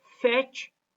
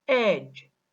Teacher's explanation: Ch is voiceless, j is voiced. Ch is stronger and longer than j. Ch makes the preceding vowel when it occurs finally shorter, whereas j makes the preceding vowel when it occurs finally longer.